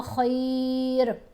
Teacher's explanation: خا کے اوپر زبر ہے، ساتھ یا ساکن ہے، تو یہ حرف لین ہے، اب خا نہیں پڑھا جائے گا، خی پڑھا جائے گا